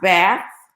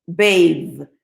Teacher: But those are two different TH sounds. The first one, bath, is what we call a voiceless TH. The second one, bathe, is a voiced one.